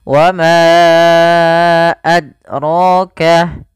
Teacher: Nah, ini dalnya tidak mantul, maka salah.